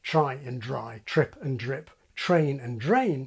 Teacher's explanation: replaced the t and d with ch and j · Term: train changing and drum majoring